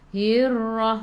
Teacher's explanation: Ra sifat hurufnya takrir, kena ada getaran. Okey, jangan terlalu kuat, sederhana sahaja.